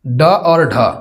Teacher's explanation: ट वर्ग के अंतर्गत जितने भी व्यंजन है वो सभी क्या है, मूर्धा से बोली जाने वाली व्यंजन है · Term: मूर्धन्य व्यंजन